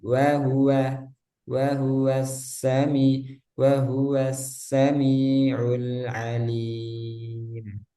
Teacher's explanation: Nah, wa di sini ada dua ya harus sama tipisnya.